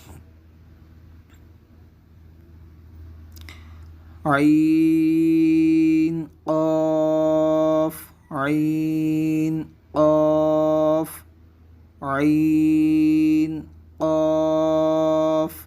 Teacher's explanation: عین کو حلق کے درمیان سے، جبکہ قاف کو زبان کی جڑ اور تالو کے نرمی سے ادا کریں گے